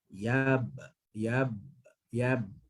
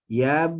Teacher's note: ba, dia mati, maka ada sifat qalqalah pada dia, lantunan